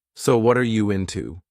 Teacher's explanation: What are can combine together, and that are can sound very reduced.